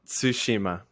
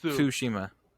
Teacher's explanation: you like kind of do like a t sound while you say the Su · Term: TSU sound